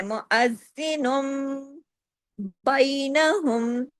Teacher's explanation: سختی سے جوڑنا ہے، زال کو ڈبل بھی پڑھنا ہے